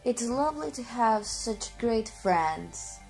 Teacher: Canadians tend to end each sentence by moving their tone of voice slightly upward